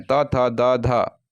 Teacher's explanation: दंत होता है दंत य होता है यानी दांतों के मदद से जो है इसकी उच्चारण संपन्न होती है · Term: दंत ध्वनियां